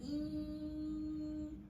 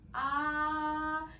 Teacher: 그러면 이 개구도가 아까 이 같은 경우는 이, 아 이러면 훨씬 더 개구도가 이가 훨씬 더 작죠. 근데 아는 개구도가 크죠. 그러면 이러면 저모음일수록 개구도가 커요.